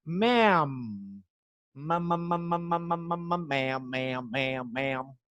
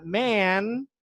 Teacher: Ma'am, de senhora, tem os lábios fechados no final.